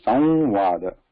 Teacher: First va is nasalized.